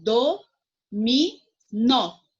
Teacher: nó é a última sílaba mais forte, a sílaba tônica.